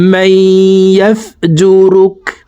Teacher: মাই এখানে ইদগামে বা গুন্নাহ, নুন সাকিনের পরে ইদগামে বা গুন্নার হরফ ইয়া আসছে, এই কারণে এই জবর ওয়ালা মিমটি তাসদীদ ওয়ালা ইয়ার সাথে গুন্নার সহিত মিলাইয়া পড়ব